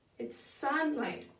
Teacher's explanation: add a tenuto over the word Sun just to give it the emphasis and then decrescendo on light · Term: syllabic stress